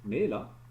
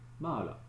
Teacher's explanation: la diphtongue AE avait donné un E long en quenya et un A long en tellérine